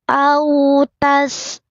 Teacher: rinnya tipis, lidahnya datar senyum